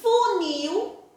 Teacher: o nil é a sílaba mais forte. Se é a última sílaba mais forte, vai ser chamada de oxítona.